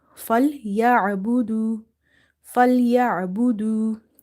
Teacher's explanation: ain is from the middle of the throat, same like ha.